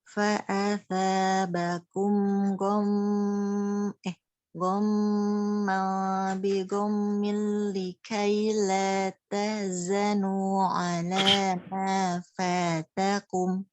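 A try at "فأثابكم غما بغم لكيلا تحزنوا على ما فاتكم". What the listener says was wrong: Oke, mengalir suara pada ghain coba. Ghamman bi ghammin saja. suara ghamman bi ghammin. Kalau mau tebal mau tipis. Ghamman gitu tipis.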